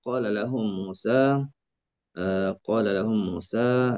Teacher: Lam bertemu dengan lam. Masukkan lam pertama ke dalam lam yang kedua. Dan kita boleh panjangkan 246 sebelum idgham. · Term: idgham kabir